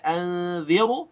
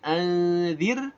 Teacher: Nah, ra-nya di sini nggak boleh baca anziru, tapi anzir, ra sukun sebelumnya kasrah, maka ra dibaca tarqiq